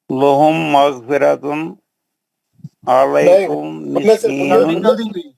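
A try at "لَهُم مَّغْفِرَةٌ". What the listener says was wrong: غننے سے پڑھنا ہے، ویسا نہیں پڑھنا. لہم مغفرۃ نہیں پڑھنا ہے، لہم مغفرۃ غنہ کرنا ہے نا.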